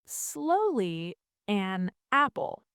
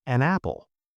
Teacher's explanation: The n in an connects directly to the a in apple. There's no pause. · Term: linking sounds